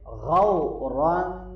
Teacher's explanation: غین کو موٹا پڑھیں گے، واو لین ہے، نرمی سے پڑھیں گے، اور را کو موٹا پڑھنا ہے، اور اوپر تنوین ہے، آگے فا آ رہا ہے تنوین کے بعد حروف حلقی میں سے، تو یہاں کیا کریں گے، اخفا کریں گے۔